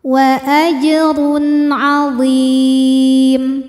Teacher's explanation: karena ada tanwin dhammah menghadapi huruf halqi atau huruf tenggorokan yaitu ain. Maka tanwin kita bunyikan dengan jelas. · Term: izhar halqi